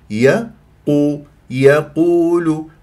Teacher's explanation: افخم القاف مرتبه ثالثه مع ضم الشفاء فيها وفي الواو وفي اللام